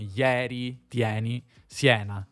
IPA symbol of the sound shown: j